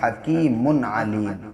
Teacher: तनवीन के बाद जब हुरूफ हल्की के 6 हरफों में से कोई हर्फ आगे आता है तो वहाँ पे इजहार करते हैं, यानी गुन्ना नहीं करते हैं, यहाँ पे इजहार करेंगे हकीमुन अलीम।